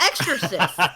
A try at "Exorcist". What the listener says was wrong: You're adding like a completely different beginning to the word. X or cyst.